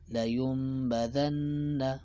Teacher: خجی د اقلاب قاعده دا ده چې کله نون ساکن راشي و هغې نه بعد با راشي که نه، نو هلته به مونږ د نون ساکن په ځای څه کوو؟ میم وایو. صحیح شوه. او غنه به هم کوو.